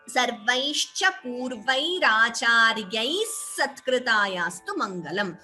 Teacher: Instead of the visarga here, you could chant it as purvairacharyai satkృతాయాస్తు. So instead of visarga, we get extra s, visarga sakara sandhi. The visarga is replaced by s.